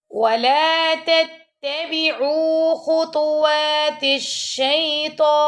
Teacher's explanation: عین کے ساتھ واو مدہ آ رہا ہے تو اس کو ہم نے 2 سیکنڈ تک لمبا کرنا ہے